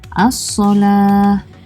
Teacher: huruf lam tidak dibunyikan untuk alif lam syamsiyah, contoh ayatnya ialah as-salah.